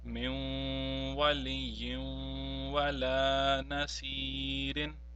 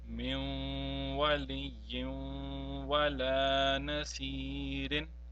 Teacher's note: both waw which are mushaddad are preceded by either a nun sakin or a nun tanween. Therefore we have to prolong them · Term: imperfect idgham